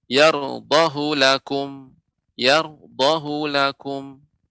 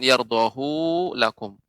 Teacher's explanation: Catatan, khusus pada Quran Surah Az-Zumar ayat 7, yarudhahu lakum, ini yang dikecualikan. Quran Surah Zumar ayat 7, tidak dibaca panjang menurut riwayat Hafiz.